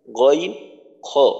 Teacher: 3 number মাখরাজ কণ্ঠনালীর শেষ থেকে উচ্চারিত হয় গইন খ